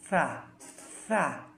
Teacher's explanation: সার মাখরাজ হচ্ছে জিহ্বার আগা সামনের উপরের দাঁতের পেট ও সামান্য আগার সাথে লেগে